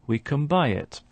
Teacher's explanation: the n sound at the end of can is just before a b, so it starts to resemble a m sound. So it's not we can buy, but we can buy it.